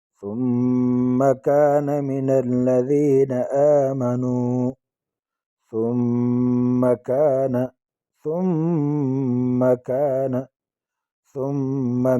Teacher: ثم میم مشدد ہے، ایک الف کی مقدار اس میں ٹھہریں گے